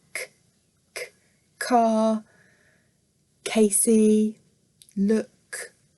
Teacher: And then we've got some sounds at the back where the blade of our tongue, the fat bit there, is lifting up against the palate at the back. So that's why we go here for our gestures to show it's at the back.